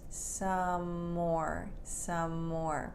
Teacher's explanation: Some, the M sound, even though it ends in an E, it ends in an M sound. And more begins with an M sound. So when we say it, the M is only pronounced once.